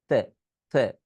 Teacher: এই সাউন্ডটা করতে হবে উপরে আর নিচের দাঁতের মাঝখানে জিহবা রেখে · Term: থ